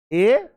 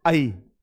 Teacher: तुम्हें खुद में समझ में आएगा कि मुंह आई में ज्यादा खुल रहा